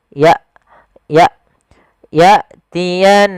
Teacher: Hamzah di sini ada sebuah sifat yang paling mencolok ya, ada syiddah dengan jaharnya, yaitu tertahannya nafas dan tertahannya suara.